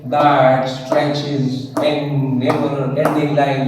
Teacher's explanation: So if you do like this, okay, that stretches in never-ending line, you will find that there are 8 syllables. The first one is unstressed, stress, unstressed, stress. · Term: iambic tetrameter